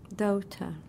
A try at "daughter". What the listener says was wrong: This is O-R. Daughter. Daughter. Not O, but O-R. Daughter.